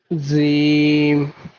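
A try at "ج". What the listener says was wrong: হলো না জিমটা আরো শক্ত হবে জিম হ্যাঁ জিম জিম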